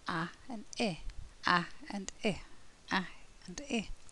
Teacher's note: And this sound is made up of a and I, a and I, a and I. So the mouth goes from open to closed, I, I. The lips stay spread throughout the whole of the sound